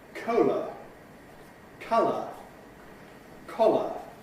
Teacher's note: The final vowel each time is a schwa, ə, our weak vowel